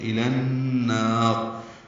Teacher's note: الا میں لام پر کھڑا زبر تھا لیکن النار کے حمزہ عارضی ہونے کی وجہ سے نون سے ملا دیں گے تو النار. نون مشدد پہ غنہ ہوگا. الن ادغام شمسی مع الغنہ.